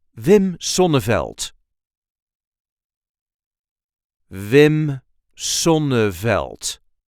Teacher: there is a light emphasis on the first syllable of his last name